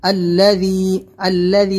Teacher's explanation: الذی، اس میں آپ دھیان دیں، ذال ہے، زا نہیں نکلے۔